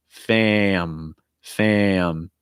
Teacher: an ng it's going to break into two parts am am when you get to that um sound you want a heavy breath going out of your nose